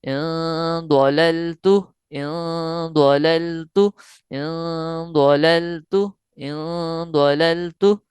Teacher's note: ناک کے بانسے میں آواز کو لے کر جانا ہے، جس کی مقدار 2 حرکات یعنی ایک الف کے برابر ہوگی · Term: غنہ